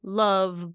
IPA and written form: lʌv (love)